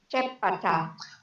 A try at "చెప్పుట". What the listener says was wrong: Actually, it is chepputa. The pavattu. This is pavattu, and also it has u vowel sound. So chepputa.